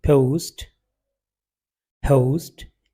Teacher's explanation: इनमें जो ओ डिफ्थोंग आता है, ये अमेरिकन इंग्लिश में थोड़ा सा लंबा हो जाता है, ये ओ हो जाता है।